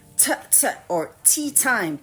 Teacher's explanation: the letter T in English sounds like this t or t time there's almost like a puff sound